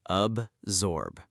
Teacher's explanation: Notice the soft Z sound in the middle, not a hard S sound.